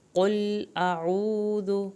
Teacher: قاف کو پر کریں، لام کو نہیں ہلانا۔ اعوذ الف اور عین کو علیحدہ پڑھیں، واو ساکن کو کھینچیں، ذال کی پیش کو لمبا نہیں کرنا۔